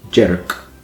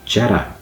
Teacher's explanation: It's got a kind of a vowel between those two syllables there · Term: epenthesis